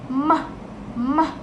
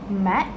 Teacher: is a voiced bilabial nasal.